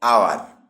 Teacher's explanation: এখানে আওয়ার শব্দটি বানানে এইস থাকলেও এটি উচ্চারিত হয় না, মানে সাইলেন্ট থাকে। এটি উচ্চারিত হয় আওয়ার, অর্থাৎ শুরুতেই স্বরধ্বনি দিয়ে। আর যেহেতু শব্দটির উচ্চারণ স্বরধ্বনি দিয়ে শুরু, তাই এর আগে অ্যান বসবে।